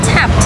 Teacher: It sounds like a t sound in tapped BECAUSE IT COMES AFTER A voiceless sound.